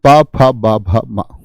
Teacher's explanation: प वर्ग आपका होठ से बोला जाता है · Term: ओष्ठ